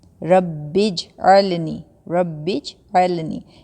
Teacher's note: اگر ہم اس کو پڑھیں گے نا، یہ دیکھیں میں تھوڑا زوم کرتی ہوں، ربج، ربی، ربج پڑھیں گے، اگر ہم اس کو ربج پڑھیں گے، با اور جیم کو ہم کنیکٹ کریں گے تو پھر یہ ٹھیک ہوگا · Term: جزم